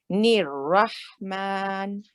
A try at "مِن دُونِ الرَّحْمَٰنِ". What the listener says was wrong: Yes, but better to start from me. Maybe you don't want to start from the noon because it's breaking the word. Duni is one word. Min dunir rahman.